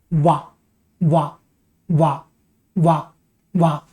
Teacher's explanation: ये जो अकेला अक्षर है जो दांत और होंठ दोनों से निकलता है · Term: दंतोष्ठ